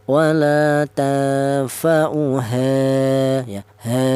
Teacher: Kemudian di sini ada ha yaitu ada ini ada alif ya di mana alif ini didahului huruf yang berharakat fathah ini dibaca madobii panjangnya satu alif atau dua harakat atau dua ketukan